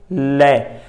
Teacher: लै दा भी उच्चारण करन लगे हैं साथियों, जो साडे जीभ दी नोक है वो दंद ते मसूड़िया नाल लग रही है। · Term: दंत पठारी